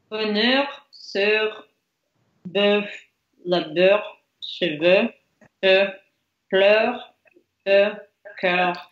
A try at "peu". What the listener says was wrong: А вот тебя как раз наоборот попрошу сказать peu, более закрытое, peu. Peu.